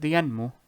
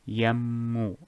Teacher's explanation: just pretend the Noon is non-existent and put the Mim right after here, instead of the Noon. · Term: idgham